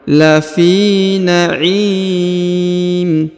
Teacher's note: huruf mim yang di ujung disukunkan atau dimatikan.